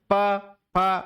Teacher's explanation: प वर्ग ओष्ठ है, जैसे प प ऐसे बोलूंगा तो होंठ अपने आप में टच होते हैं